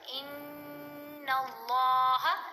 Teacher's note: لام کو موٹا بھی پڑھیں گے لمبا بھی پڑھیں گے